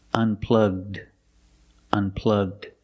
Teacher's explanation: Link the G sound with the D.